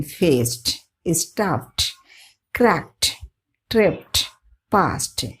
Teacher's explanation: D in the termination ed preceded by a sharp consonant takes the sound of T when the E is suppressed or unheard, as in faced, stuffed, cracked, tripped, passed, pronounced fast, stuffed, cracked, tripped, passed.